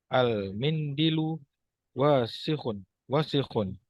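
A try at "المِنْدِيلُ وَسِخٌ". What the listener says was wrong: afwan, kurang tepat. Al-mindilu. Dalnya panjang.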